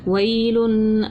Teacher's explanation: واو یا زبر وئی، لام دو پیش لن، ویلن، آگے وقف ویل، یا لین تھی نرمی سے پڑھا، دو پیش کی تنوین کو غنہ کر کے پڑھا